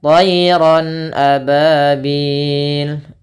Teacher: suara tanwinnya harus jelas karena di sini bertemu dengan hamzah.